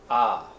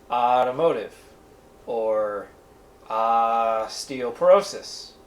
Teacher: And they both make the same sound. It's an ah sound, that very open ah, like in automotive or osteoporosis.